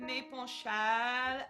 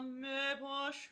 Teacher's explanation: you could round the vowel a little bit more towards the German OE, or okay? So when you go up, amia, me penche, instead of me penchal and going full open, try a little me penche in the turn.